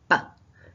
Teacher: So for a word like bar, in terms of articulation, the way we shape that sound is with our lips. We bring our lips together, ba, to create the b sound, and then the way we shape our tongue produces the r sound.